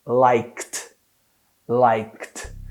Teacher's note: A gente precisa falar assim, ó, liked, liked. Então imagina que tem uma pausa no k, nesse som do like, e ele direto vai pular para um som de T, que é assim, ó, liked, liked, liked.